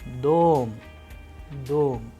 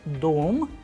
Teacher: in the word dom, the sound of O is higher than the rest of the letters